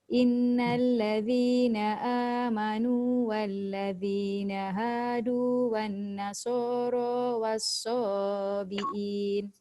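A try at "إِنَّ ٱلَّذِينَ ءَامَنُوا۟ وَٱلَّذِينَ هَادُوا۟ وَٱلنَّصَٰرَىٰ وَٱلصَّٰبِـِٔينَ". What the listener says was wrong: Mana-mana nun yang tanda sabdu atau mim tanda sabdu tak boleh baca satu harakat dengung dia. Dia kena dua harakat. Wan nasara was-sabiin. Jadi kat situ ada dua nun sabdu, kena dengung dua harakat.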